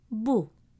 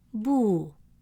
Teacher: The letter ba with the short vowel Dammah makes a sound bu, short and round, with your lips rounded. Then when we add waw to stretch the sound, it becomes boo, a longer version of the same sound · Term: long U sound